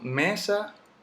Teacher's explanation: El golpe está en la me, en la sílaba me. Y la sílaba sa no tiene el golpe.